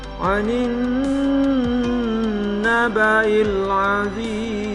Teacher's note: nun bertasdik, sama dengan mim bertasdik, dibaca gunnah. Lama mendengungkannya adalah 3 ketuk atau 1,5 alif.